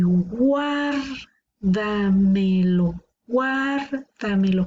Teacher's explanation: La sílaba tónica está una antes de la antepenúltima. Esta es última, penúltima, antepenúltima y esta es una antes de la antepenúltima.